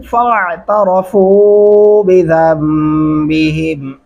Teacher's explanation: फ़ा आइन गले से अदा करेंगे, बिज़म्बिहिम ज़ाल को मीम के साथ मिलाते हुए गुन्ना करेंगे, बिज़म्बिहिम।